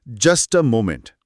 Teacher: تو یہاں فلیپ ٹی کا اصول لاگو ہوگا. جسٹ اور اے کے بیچ میں آنے والا ٹی ایک نرم ڈ کی آواز میں بدل جائے گا